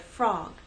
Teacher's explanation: at the beginnings of words for example in the word frog we have F and r ER they blend together and go into the next vowel sound